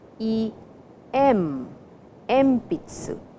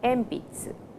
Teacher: but when you pronounce it it is e m Pizza so before P the sound n changes to M